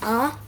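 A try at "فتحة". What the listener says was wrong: Good job.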